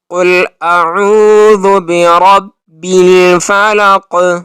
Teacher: اب قل میں کاف کو موٹا پڑھنا ہے، اور اعوذ اس کو اعوذ نہیں پڑھنا، بلکہ حمزہ اور عین دونوں کو اپنے اپنے مخرج سے پڑھنا ہے۔